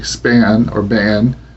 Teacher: if you say span or ban, you will not feel this puff of breath